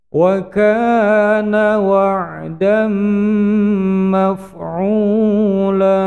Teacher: Ini idgham biguna, tanwinnya dimasukkan pada mim panjang dua ketukan